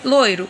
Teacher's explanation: a letra O é pronunciado com mais força que a letra i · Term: semivogal